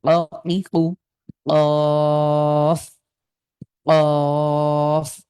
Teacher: কফের উচ্চারণ কিন্তু ধাক্কা দিয়ে, জিভের গোড়াটা তালুর সাথে লাগিয়ে একটু ধাক্কা দিয়ে দিয়ে